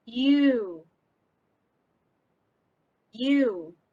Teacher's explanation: If you say this consonant by itself, you should be able to feel that it begins with the front of the tongue raised toward the high palate. · front of the tongue and hard palate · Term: Palatal